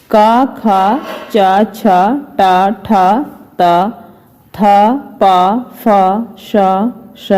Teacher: नाद की जगह यानी आवाज की जगह केवल सांस का उपयोग होता है, उन्हें अघोष वर्ण कहते हैं।